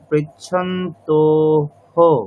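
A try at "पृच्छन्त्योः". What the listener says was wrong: আবার অর্পিতা ম্যাডামের মতো ভুল হয়ে যাচ্ছে, পৃচ্ছান্তোহ নয়, এখানে জফলা আছে, জফলার উচ্চারণ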